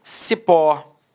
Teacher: repare que a sílaba tônica é a última e ela é terminada em O também